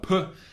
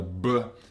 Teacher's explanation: p is unvoiced, and the b is the voiced bilabial plosive